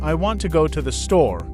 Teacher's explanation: example in the sentence I want to go to the store the words want go and store are stressed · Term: sentence stress, Sentence stress